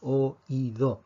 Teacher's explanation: en la palabra oído, la fuerza está en la I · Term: hiato